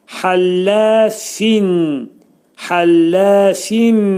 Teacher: Həllə fində hə boğazın ortasından çıxarılır. Bu boğaz hərfidir. Həllə lə də burada incə samitə qrupuna aiddir.